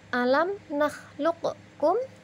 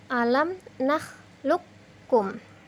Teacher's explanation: qaf mati bertemu dengan huruf kaf, maka cara membacanya kafnya ditasydid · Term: idgham mutaqaribain